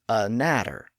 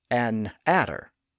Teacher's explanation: rather than inserting a brief pause after the a, they put the pause after the n.